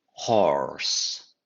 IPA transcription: hɔːrs